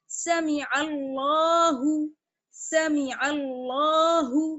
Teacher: اللہ کا لام ہے تو لام کو دیکھیے موٹا پڑھیں گے کیونکہ عین پر زبر ہے